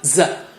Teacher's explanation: Dot means stronger airflow, and we have strong airflow in za.